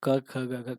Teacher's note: क ख ग करेंगे तो गले से आवाज निकल रही है